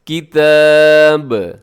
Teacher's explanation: با کے اوپر وقف ہے، با ساکن ہوگا تو قلقلہ ہوگا